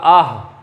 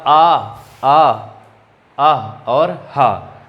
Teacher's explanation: इन सबका उच्चारण स्थान होता है कंठ